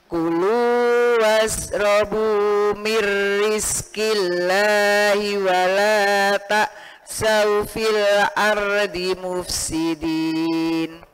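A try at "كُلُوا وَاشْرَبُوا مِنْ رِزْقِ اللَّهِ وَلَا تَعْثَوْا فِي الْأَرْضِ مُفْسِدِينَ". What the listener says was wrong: ya shinnya zanya harus jelas shinnya zanya i kulu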